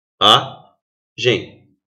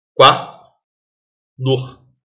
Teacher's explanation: vi a gem então o i e o a não estão na mesma sílaba formamos o quê um iato